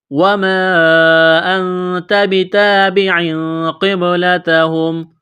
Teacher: یہاں تنوین کے بعد قاف ہے، حروف اخفا ہے، غنہ کریں گے